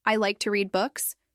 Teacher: your pitch will fall at the end of the sentence, indicating that you're making a statement. This falling intonation helps the listener understand that you are giving information, not asking a question.